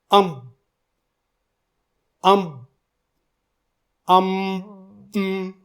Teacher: अम बोलकर जैसे ही नाक को खोल दी जाती है तो हरफ मीम की आवाज बाहर निकलती है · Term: गुना